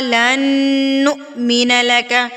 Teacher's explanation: واو کے اوپر حمزہ ہے اور حمزہ سکون کی حالت میں ہے تو اس کو ہم جھٹکا دے کے پڑھیں گے